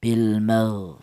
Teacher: Jelas bahwa huruf ghin ini keluarnya berasal dari tenggorokan bagian atas